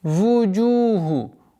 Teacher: Удлинение в размере двух огласовок даммы.